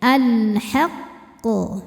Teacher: Jadi kalau yang bertasydid kita harus menyempurnakan tasydidnya, artinya kita tekan, kita tahan pantulannya nggak langsung keluar melainkan ada delaynya dulu ya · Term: qalqalah akbar